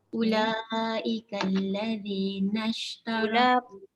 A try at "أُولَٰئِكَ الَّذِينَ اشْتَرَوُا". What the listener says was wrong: Panjang sikit lagi. Dia paling kurang 4.